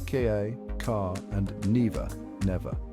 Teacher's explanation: The R sound, often pronounced with a soft roll in American English, tends to disappear at the end of words in British English, leading to pronunciations like ka, car, and never, never.